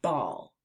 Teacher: To make the B sound, start by pressing your lips together firmly and then releasing a puff of air while turning on your voice. You can feel the vibration of your throat as your vocal cords work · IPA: /b/